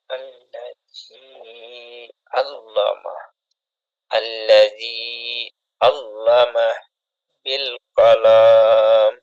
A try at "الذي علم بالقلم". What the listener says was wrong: কলাম টান হবে না এরকম ভাবে আক্রমের মতো টান হবে না আল্লাযী আল্লামা বিল কলম আল্লাযী বলার ক্ষেত্রে জালটা আরো পাতলা করবেন হ্যাঁ জালের মাখরাজ জিহ্বার আগা সামনের উপরে দুই দাঁতের আগার সাথে লাগবে জাল আল্লাযী জিহ্বার আগা সামনের উপরে দুই দাঁতের আগার সাথে লাগান আল্লাযী আল্লামা কলামটা